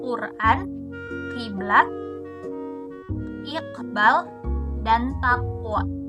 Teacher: Dilafalkan dengan menutup jalur udara di uvula atau bagian belakang langit-langit mulut. Tidak menggunakan getaran pita suara. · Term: konsonan letup uvular nirsuara